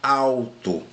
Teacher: eu tenho um som de U aqui, pessoal. Então, ó, alto, eu tenho um ditongo aqui.